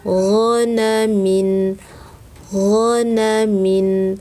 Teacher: angkat bagian belakang lidah di belakang tenggorokan